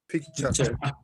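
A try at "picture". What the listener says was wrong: বেশি ভাস করার দরকার নাই। পিকচার, শেষে যে আর ই থাকলে এগুলা হচ্ছে যে মানে মোটামুটি শোয়া সাউন্ডের মতো, এগুলাকে শোয়া সাউন্ড বলে। মানে আইলসা আছে না, আইলসা সাউন্ড বলে, এটা বাংলা ভাষায় আইলসা সাউন্ড, শোয়া সাউন্ড বলে।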